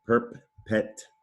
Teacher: Starts with the syllable perp. There's an R control vowel sound there. Perp, not to be confused with prep.